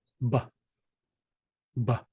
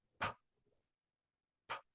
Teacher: The difference between them is whether you're using your voice or not using your voice. So B is a voiced sound, B.